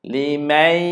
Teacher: Dengunnya seolah-olah kita nak bersedia untuk kita sebut huruf ya. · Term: idgham bi gunnah